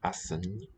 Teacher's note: It's a palatal nya.